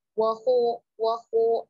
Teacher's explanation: kho tebalkan ya, tapi jangan sampai monyongkan kedua bibirnya.